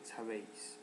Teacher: Sabéis tiene acento en la E, que es la sílaba abierta